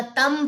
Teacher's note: नून साकिन को मीम से बदल देंगे और फिर यहाँ पे तन की जगह तम पड़ा जाएगा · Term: इकलाब